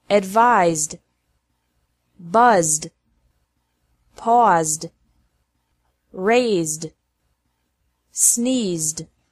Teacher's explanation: Ed is pronounced like d after verbs ending with a z sound